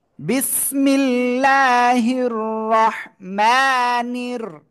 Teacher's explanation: র এর উপরে জবর রয়েছে মোটা আওয়াজে পড়তে হবে